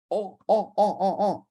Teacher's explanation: C'est une gutturale. Oh, oh, oh, oh, oh. Il y a la gorge là qui intervient.